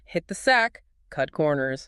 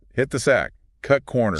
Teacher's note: We have these T sounds. We don't say hit the sack with a big explosion of air. It's a stop.